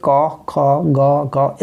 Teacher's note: तो जो क वर्ग है उनका जो उच्चारण स्थान है वो हम कह सकते हैं, क का उच्चारण स्थान कहाँ पे होता है, कंठ से।